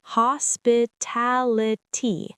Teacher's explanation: The main stress is on the ta